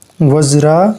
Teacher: व जो है वह ह्रस्व है लेकिन उसके आगे जो संयुक्त वर्ण ज्रा है इसके कारण वह गुरु बन जाएगा फिर ज में आकार है इसीलिए यह भी गुरु है। फिर